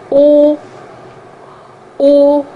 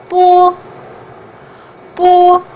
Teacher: O is like in frog, but the only difference between frog and Chinese O is the shape of your mouth. Because when you pronounce Chinese O, your mouth looks more like a perfect circle than oval